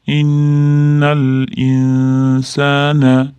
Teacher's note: o'rinbosari bo'lib naq qof qalqala bihi jam to qalqala deb bihi yana bu yerda ham mana yodi o'rinbosarib turibdi bihi deb cho'zamiz jam innal insana g'unna qilamiz tashdidli nun kelyapti